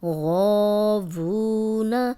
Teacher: غو کو 2 حرکات لمبا کریں گے، وو کو 2 حرکات لمبا کریں گے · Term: الف مدہ